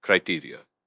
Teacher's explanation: pronounced criteria with the accent on the second syllable. This one's interesting because it's a plural noun.